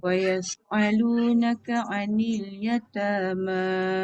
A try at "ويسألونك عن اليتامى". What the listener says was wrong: Okey, jangan kuat sangat tekan dia jadi ain. Wa yas'alu jangan alu.